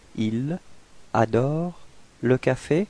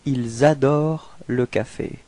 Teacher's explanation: So the reason for that is that adore, you can see that it's starting with a vowel, and in this case it's possible to make this small link between the S and the A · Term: liaison